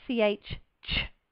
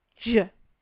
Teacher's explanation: Remember, it's voiceless for that ch, ch, and voiced for j.